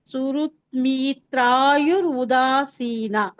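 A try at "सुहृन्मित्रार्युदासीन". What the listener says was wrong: ಉದಾಸೀನ ಅಂತ ತಗೋಬೇಡಿ ತಪ್ಪಾಗುತ್ತೆ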